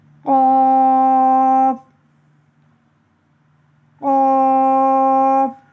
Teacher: قاف کو موٹا کر کے پڑھتے ہیں. زبان کی جڑ کا آخر جو کوے کے پاس ہے جب اوپر کے تالو سے لگے تو قاف ادا ہوتا ہے